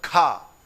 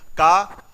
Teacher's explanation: जैसे ही खा बोला तो हवा निकली, का में नहीं निकली। का खा, गा बोला तो फिर हवा नहीं निकली, फिर जैसे ही घा बोला फिर हवा निकली।